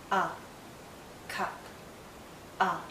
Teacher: it's a very short sound and also a very relaxed sound